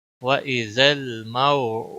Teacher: واو ساکن سے پہلے زبر لین تھوڑا نرمی کے ساتھ کھینچ کر ادا ہوگا